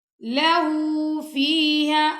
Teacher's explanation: لہو کی جو ہاں ہے نا اس پہ الٹا پیش آ رہا ہے تو ہم نے لہو کو لمبا کرنا ہے